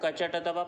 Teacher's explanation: क वर्ग का होता है कंठ, च वर्ग का होता है तालु, ट वर्ग का होता है मूर्धा, त वर्ग का होता है दंत, प वर्ग का होता है ओष्ठ। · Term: उच्चारण स्थान